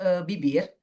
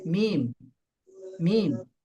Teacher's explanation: Dari dua bibir, tapi bibir atas bawah itu lebih ditekan daripada mim.